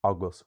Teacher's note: we have abhus with stress on the a, you will find it pronounced everywhere as these different ways.